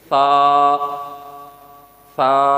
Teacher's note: دانتوں کو زبان کے ساتھ لگا کر فوراً اٹھا لیں گے. جب ہم ذرا سا بھی زبان کے اوپر دانتوں کو دبائیں گے, جس طریقے سے دیکھیے سا, یہ میں نے دبایا ہے تو سیٹی کی آواز نکل آئی ہے. اور ہلکی سی پیچھے سے زبان اوپر پش کر رہی ہے, اوپر سے پیچھے سے زبان اوپر تالو کے ساتھ لگ گئی ہے.